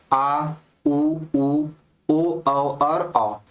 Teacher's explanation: जिन स्वरों के उच्चारण में जीभ का पश्च भाग काम करता है पश्च भाग का मतलब पिछला भाग काम करता है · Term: पश्च स्वर